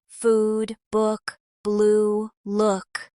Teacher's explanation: Americans keep the tense oo sound long and round, while the relaxed version is shorter and softer.